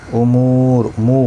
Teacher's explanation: واو مدہ ہے، 1 الف کی مقدار کے برابر کھینچ کر پڑھیں گے